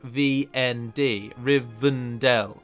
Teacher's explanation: the word rivendel the E isn't really spoken